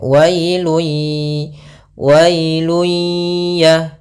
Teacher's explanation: pada lafal wa ketemu dengan huruf Ya Sukun maka dia lembut dalam pelafalannya · Idgham artinya kita memasukkan. Apa yang kita masukkan adalah suara tanwinnya atau suara nunnya ke huruf ya, maka hilang bunyinya, tapi dia masih menyisakan suara bunyi dengan gunnahnya. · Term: idgham bi gunnah